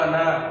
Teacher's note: یہ نون کے بعد جو یہ الف ہے یہ لکھا ہوا ہے، یہ وصل میں ہم نہیں پڑھیں گے. وقف میں تو پڑھیں گے. اگر ہم وقف کر جاتے ہیں اس صورت میں وقف کرنا پڑ گیا تو ہم تو الف پڑھیں گے انا.